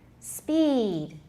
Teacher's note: We've got just one syllable, so it can be very long and lazy.